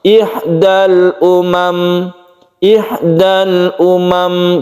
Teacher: tidak berdengung ya tapi dia sedikit tawasut atau tidak boleh terlalu ditekan itu sifat dari mim ihdal Umam ihdal Umam jadi dia masih menyimpan sedikit gunah tersebut